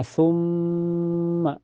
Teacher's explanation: ada guna musyaddadah karena ada mim bertasdid. Cara bacanya ditahan sekitar 2 ketukan saja. Dan sebabnya sebelum mim bertasdid ada huruf hidup yaitu harakat dhamma di sa ya.